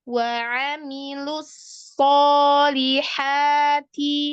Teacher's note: Hati-hati di huruf lu-nya itu jangan tebal dulu baru ke sod. Nah di sodnya itu tahan karena dia rokhwah.